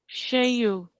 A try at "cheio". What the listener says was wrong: Because in Portuguese we will pronounce all the vowels. So we cannot even skip the I in between. She, I, U. That is why it's cheio.